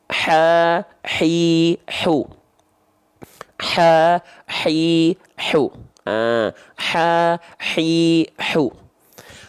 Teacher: Kalau ainnya dan hak kecil, khususnya hak kecil, dilafalkan tepat dari bagian tengah tenggorokan · Keluarlah dari bagian wastul halki yang disebut dengan tengah tenggorokan.